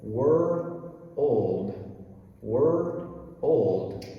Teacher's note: remember we have r plus dark l so remember it is two separate sounds